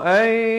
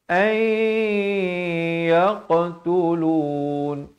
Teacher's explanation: Masuk beserta dengung, bukan an tapi ay yaqtulun. Yaqa ada lantunan di sini dan bulatkan mulut bila nak berikan lantunan itu.